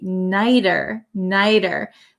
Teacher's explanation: T becomes a flap T